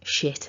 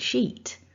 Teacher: It's the difference of that vowel, the short I versus the long E.